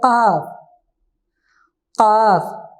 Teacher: इसे थोड़ा सा हम मोटा पढ़ते हैं हलक से